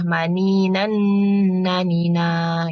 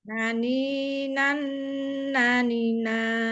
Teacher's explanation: Yang ini tuh kan ada apa dari maninan terus kemudian ketemu nanina ini tuh kan dia ada tanwin bertemu nun itu dia ada gunahnya Bu jadi ditahan sedikit ya Bu ya. Ditahannya agak lama malah ada gunah